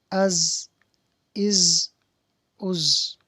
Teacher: زا ہے، اس پر زبان اوپر کے سامنے کے دونوں دانتوں کے اندرونی کنارے سے نہیں لگے گی